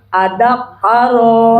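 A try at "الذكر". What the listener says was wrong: Tasdid. Az-zakara. Kafnya jangan tasdid. Az-zakara.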